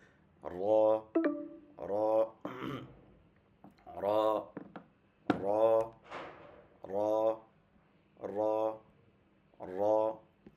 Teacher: জিহ্বার আগার উল্টা পিঠ তার বরাবর উপর তালুর সঙ্গে লাগালে সেটা উচ্চারণ হবে